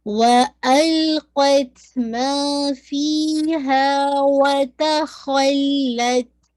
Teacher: ما پورا 2، فی پورا 2، ہا پورا 2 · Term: مدیاں